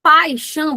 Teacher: A semivogal, turma, ela se apoia na vogal, trazendo um som mais fraco. Quando você fala paixão, você vê que o A, ele é pronunciado com mais força. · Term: ditongo